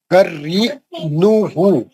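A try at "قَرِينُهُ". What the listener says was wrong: हाँ, हर जगह आप पेश को जबर पढ़ रहे हैं। खरीन, मैं बोला पेश पढ़ चुका, मैं होठ गोल रख के पढ़ो।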